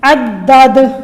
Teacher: اسی طریقے سے عدد، اینڈ پہ دال ہے، دال حروف قلقلہ میں سے ہے، وقف کرتے وقت ہم دال کو ہلائیں گے، اس پہ قلقلہ کریں گے